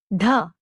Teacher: It sounds like a breathy da in the word data or the sound of dha in the name of the Bangladeshi capital Dhaka.